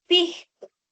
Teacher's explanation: Eh, en lugar de que se perciba mantequilla con la lateral palatal, se percibe mantequilla con la fricativa palatal. La aspiración de la s como una J suave. · La aspiración de la S como una J suave, por ejemplo, en lugar de escuchar la palabra pisco, aparece el término pisco.